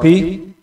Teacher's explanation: ini berharakat kasrah jadi suaranya paling lemah tidak kuat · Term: huruf istila